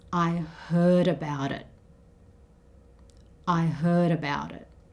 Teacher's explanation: the T sound in about changes to something that sounds more like a D. So this becomes I heard about it.